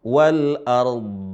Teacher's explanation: Maka ra tetap dibaca sukun, dha juga dibaca sukun karena dia huruf terakhir, tapi ada sifat dha yang tersisa. Yaitu apa? Isti'la, ada tebal ya.